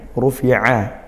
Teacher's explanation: Rufi'at hati-hati pakai ain. Rufi'a ain makhrajnya di tengah tenggorokan.